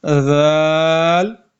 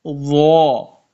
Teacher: آپ نے زال کو باریک پڑھنا ہے اور زوا کو آپ نے منہ بھر کے پڑھنا ہے